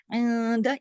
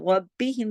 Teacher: ربی میں را موٹا پڑھا جائے گا، باقی سب باریک